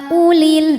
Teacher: dibaca panjang empat atau lima harakat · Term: majaiz munfasil hukmi